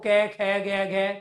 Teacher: आपका जो है कंठ आपका एक्टिव है इन वर्णों के उच्चारण में